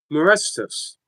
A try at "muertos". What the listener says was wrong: muertos. it's not the S. It's muertos. muertos.